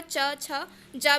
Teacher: तालु से चा वर्ण का उच्चारण होता है। इसके अलावा च, छ, ज भी, इन व्यंजनों का भी उच्चारण तालु के द्वारा होता है। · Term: तालव्य